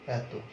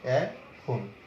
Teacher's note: 2 অক্ষর বিশিষ্ট সর্বনাম বা অব্যয় পদে এ ধ্বনি বিবৃত হয়